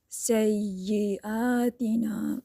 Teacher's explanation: اور میم مشدد پہ اچھے سے غنہ کرنا ہوتا ہے۔ سیئاتنا، آ اور نا دونوں کو ایک ہی جتنا لمبا کھینچیے گا